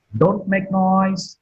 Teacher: Noise is marked with falling tone.